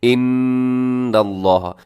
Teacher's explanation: غنہ کیا جاتا ہے، اس میں آواز کو ناک میں رکھا جاتا ہے